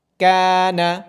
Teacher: یہاں الف سے پہلے کاف ہے۔ کاف کیونکہ ایک باریک حرف ہے اس لیے یہاں الف کو باریک پڑھا جائے گا اور اس کو ترقیق کہا جاتا ہے۔